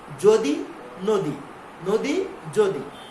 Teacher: আমরা উচ্চারণে দীর্ঘ ইকার উচ্চারণ করি না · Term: হ্রস্ব ই